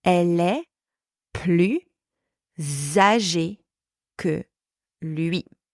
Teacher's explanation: But now I am adding the sound z for zero or zebra in between those two words, in between the word plus and âgé. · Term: liaison